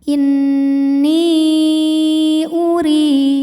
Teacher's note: maka nun dipanjangkan boleh empat boleh lima harakat · Huruf ra dibunyikan secara tarqiq sebab berbaris di bawah yaitu baris kasrah. Maka dibaca dengan tipis. Ri hukumnya adalah mad tabi'i dhahiri sebab ada ya sukun yang sebelumnya berbaris kasrah. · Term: mad jaiz munfasil